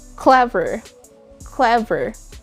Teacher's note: we normally place the word stress or the emphasis on the first syllable just like clever clever notice that starts there clever and it